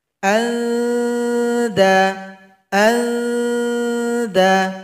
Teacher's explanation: huruf dal sama dengan ta, ujung lidah, kita arahkan ke belakang gigi seri bagian atas dekat gusinya. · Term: ikhfa hakiki